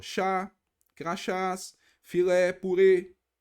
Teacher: a última sílaba é a tônica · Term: oxítonas